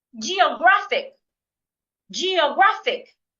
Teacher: I'm stressing the third syllable here.